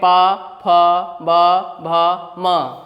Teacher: पवर्ग में प, फ, ब, भ, म और उपधमानीय, इन सभी वर्णों का उच्चारण स्थान जो है वो क्या है? ओष्ठ है। इसीलिए इन वर्णों को हम कहते हैं ओष्ठ्य वर्ण।